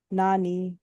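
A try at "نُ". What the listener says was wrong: টান হলো কেন? নানু তাড়াতাড়ি হবে।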